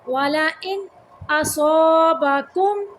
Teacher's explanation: نون کو ظاہر کرنا ہے، اظہار کا قاعدہ ہے